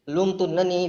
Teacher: تو ہم نے نون کو تشدید دیا, نون پہ غنہ بھی کرنا ہوتا ہے